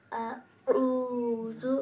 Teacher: आइन की आवाज़ से गले से अदा हो